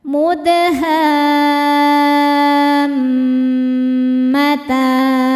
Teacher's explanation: ha-nya dipanjangkan wajib enam harakat kemudian masuk ke mimnya ada dengungannya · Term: mad lazim qilmi mutsaqqal